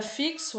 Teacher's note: isso também né o fixo a gente tem um x mas quando pronunciamos esse x tem o som de ks